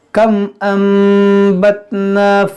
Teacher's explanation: نون ساکن کے بعد با ہے تو یہاں پر بھی اقلاب ہوگا